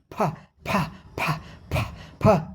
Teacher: पहले हमारे ओठ बंद होगा, हवा जो है रुक जाएगी, उसके बाद हवा ठेलेगी, ओठ खुलेगा और झटके से हवा बाहर निकलेगी, फ फ फ फ फ की आवाज़ आएगी।